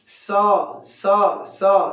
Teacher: इसको दांत से बोला जाता है